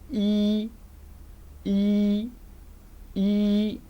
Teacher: front of the tongue is raised, and if we look at our lips position, we'll find it that our lips are unrounded in the production of these sounds.